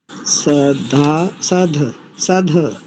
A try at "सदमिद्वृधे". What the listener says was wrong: ध नहीं, द दकार, सदमिद्वृधे। ध्यान से पकड़ो, देखो दोनों स्थानों पर पहले दो दकार हैं, एक धकार है। दो स्थानों पर द है, एक स्थान पर ध है।